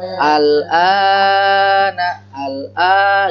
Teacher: Jadi A dulu panjangin, habiskan dulu seperti alif lam La-nya dihabiskan dulu, kemudian masuk mim.